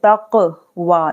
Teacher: तो हम क्या करें, यहाँ पर काफ है, यहाँ देख सकते हैं काफ, तो क्या करेंगे हम यहाँ कलकला करेंगे, कलकला यानी आवाज इको की तरह पढ़नी है, ठीक है, हिला के पढ़नी है, कलकला करनी है, यानी यहाँ पर आवाज लौट कर आएगी